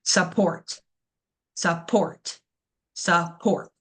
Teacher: So our stress syllable in support, that is going to be the last port. We kind of skip over the beginning, support, support, support. We really over enunciate that last ending word.